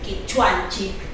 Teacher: esa terminación chic, que nosotros en Cusco Collao no lo realizamos